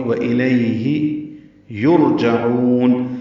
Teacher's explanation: عین وسط حلق سے ادا کریں گے، اب عین کو لمبا کریں گے، وقفاً مد عارض للسکون ہے۔